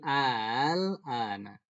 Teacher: Tapi itu namanya hamzah musahhalah. Dia hamzah tapi dibacanya musahhalah, ditashilkan. Nah, dimudahkan cara bacanya.